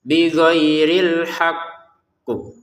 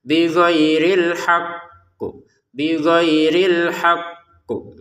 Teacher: Dia tidak hanya ditekan tapi juga dipantulkan. Karena ada tasydid tekan dulu tasdidnya baru pantulkan qof-nya.